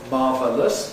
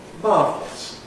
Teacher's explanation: It can be /ˈmɑːvələs/, but in real life, it’s usually /ˈmɑːvləs/ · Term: compression